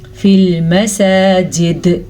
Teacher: فی المساجد ہم نے وقف کیا تو ہم دال پہ قلقلہ کریں گے، سین کو کھڑی زبر کے حساب سے لمبا کریں گے.